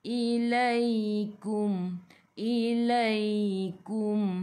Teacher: Mim ada sukun, jelaskan mim izhar syafawi.